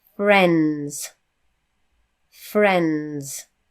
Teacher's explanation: It's fr, so it's ends. And we don't say s at the end of friends. The s is actually a z sound. It's a z sound, okay?